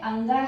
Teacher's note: और यह एक अनुनासिक वर्ण है। और इसका उच्चारण करते समय जब हम उच्चारित करते हैं तो नाक और मुंह दोनों का प्रयोग करते हैं। इसी इसीलिए इसे नासिक्य भी बोलते हैं और अनुनासिक भी बोलते हैं।